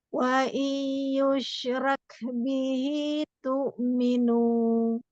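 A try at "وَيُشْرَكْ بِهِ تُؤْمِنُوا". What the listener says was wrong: Oke, belakangnya bagus. Nanti selalu lebih panjang dengungnya ya. Kurang tuh.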